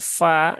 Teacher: pastikan dia tipis dan tidak seperti bunyi P ya Bukan pala tetapi Fa ya Ee ujung dua gigi seri